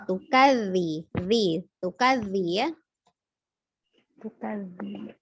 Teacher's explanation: Dzalnya ada 2, di mana satu sukun dan satu berharokat. Ya, ujung lidah bertemu dengan ujung gigi seri atas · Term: huruf dzalnya